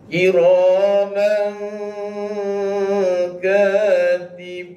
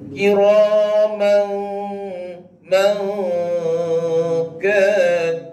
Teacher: kita rasa dengung tu di rongga hidung.